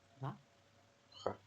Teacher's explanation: Rue is exactly the same as in English, but you do not pronounce the final T.